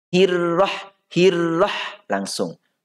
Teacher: ro-nya itu tidak ada getaran yang melebihi satu.